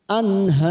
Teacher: Har kita panjangkan empat harakat karena kita wakaf di sini